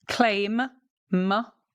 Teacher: I pronounce the M at the end. I'm engaging my vocal cords.